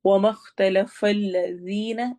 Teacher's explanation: ذال کو نرمی سے پڑھنا اور یا مدہ کرنی ہے